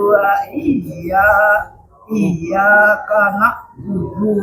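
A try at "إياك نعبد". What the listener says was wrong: Nah, di situ jangan lupa ada dhammah. Wudu, ada dua dhammah di situ. Iyyaka na'budu. Dhammah. Pendek.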